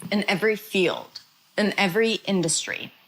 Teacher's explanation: Now notice the word in turns into a schwa.